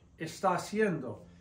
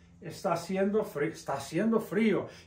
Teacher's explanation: And when you pronounce está haciendo, notice we have an A here. The H is always silent. It's as if it doesn't exist. So this A and this A blend together and it's pronounced gliding together.